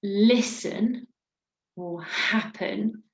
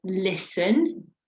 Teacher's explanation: we emphasize the beginning of the word